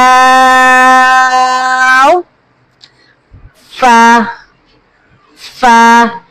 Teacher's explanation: ऊपर के दांतों के किनारे और निचली होठ का जो तल हिस्सा होता है वहां से अदा होता है।